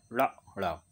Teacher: शब्दकोश में कोई भी शब्द इन व्यंजनों से शुरू नहीं होता है। इसके उच्चारण में जीभ मूर्धा को स्पर्श करके तुरंत नीचे आए, जैसे ड़ा ड़ा। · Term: उत्क्षिप्त व्यंजन